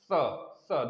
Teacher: दंत मूल से बोलेंगे, दंत वाले भाग से बोलेंगे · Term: छोटा वाला सा